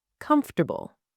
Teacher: Comfortable, 3 syllables. The middle disappears completely.